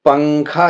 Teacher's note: تنوین یا نون ساکن کے بعد حروف اخفاء آئیں تو نون کی آواز کو ناک میں چھپا کر پڑھنا چاہیے